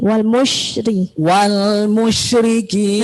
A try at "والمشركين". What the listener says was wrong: Nah, masih ada A-nya. Wal musyri.